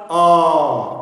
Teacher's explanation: कंठ से हवा गरम गरम निकल रही है बिना बाधा के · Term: स्वर